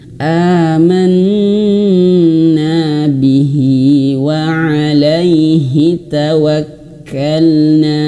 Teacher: nun bertasydid ini dikatakan 2 harokat tapi durasinya sedikit lebih lama.